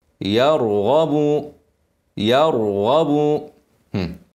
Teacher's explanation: وفخم الراء ساكنه قبلها مفتوح